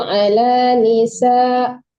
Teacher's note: Ya, ditipiskan sinnya Bu, ala nisa. Tadi agak ke shin gitu.